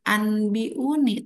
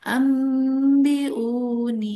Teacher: Jadi jangan anbiuni tapi ambiuni rada didengungkan ya. Dengungnya dua harakat saja. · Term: iqlab, iklab